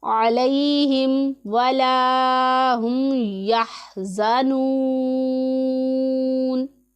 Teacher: یا ساکن ہے، اس سے پہلے زبر ہے تو یائلین ہے، اسے بھی ہم نرمی کے ساتھ ادا کریں گے، نہ ہی اسے ہم کھینچیں گے نہ لمبا کریں گے، اسے ہم نرمی کے ساتھ ادا کریں گے.